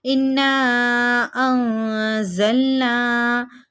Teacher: زال حروف اقفا میں سے ہم نے پڑھا تھا پچھلے درس میں, تو ناک میں آواز کو چھپا کے پڑھیں گے